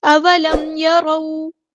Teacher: یہاں پر میم ساکن پر اظہار شفوی ہو رہا ہے، ٹائم نہیں دینا